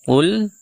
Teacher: huruf qof yang kita baca tebal karena dia huruf istila sehingga pangkal lidah kita kita naikkan ke langit-langit untuk menebalkan suaranya